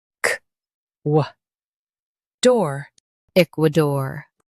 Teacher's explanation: Stress the eek and keep dor light.